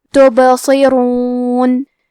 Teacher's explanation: کلمت تبصرون میں حرف البا پہ جزم ہے. یہاں حکم ہے قلقلہ تو ہمیں با کو ہلاتے ہوئے یہ کلمہ کو پڑھنا ہے